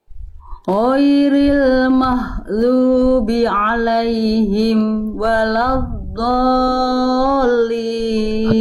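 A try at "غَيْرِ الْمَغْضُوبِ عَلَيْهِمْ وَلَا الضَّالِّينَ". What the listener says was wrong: Bunda di sini bukan mahdu ya. Bunda ini kesalahan besar juga yang Bunda lafalkan tadi jadi huruf H besar. Mahdubi alai, bukan mahdu tapi ghain. Ghairil maghdubi. Huruf ghain itu sama kayak huruf kho, Bunda, tapi nggak pakai nafas.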